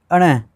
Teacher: इसी प्रकार से इं आ गया यानी कि ये तालु से भी बोला जाता है और नासिका से भी बोला जाता है। फिर अण ये अपने मूर्धा से भी बोला जाता है और नासिका से भी बोला जाता है।